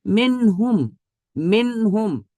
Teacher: نون کی آواز آئی ہے، اور ناک میں ایک الف کے برابر کی مقدار جو ساؤنڈ ہے اس کو نہیں نکالا گیا۔ ایک الف کے برابر یہ جو ساؤنڈ ہے یہ نہیں ہے، یہ نہیں ہونا چاہیے، نون اپنی جگہ سے نکلے، منہم، یہ اظہار کا حکم ہے۔